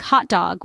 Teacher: For instance, when we say hot dog, we don't really pronounce the T in hot before we start on the D in dog. It's more like hot dog with the T and D sounds blending together. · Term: delayed plosion